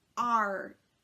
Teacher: Now for this one, the T, the tongue taps on the tip right behind your teeth. And when we're doing the R, your tongue tip is down and your tongue is pulled back in your mouth.